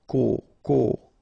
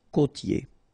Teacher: So here you get this O, accent circonflexe. You tend to insist a little bit more on it, so it's a bit lower.